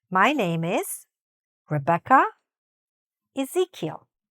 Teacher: My name is, pause, first name going upward, pause between the first and the last name